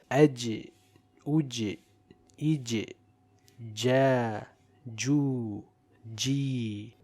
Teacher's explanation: the sound and breath does not flow and it is a light letter but recited with qalqalah in the sakin state. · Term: Jim